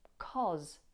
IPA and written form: kɒz (cause)